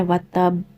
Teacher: قلقلہ کبرا مینز یہاں آپ نے ہیوی والا قلقلہ کرنا ہے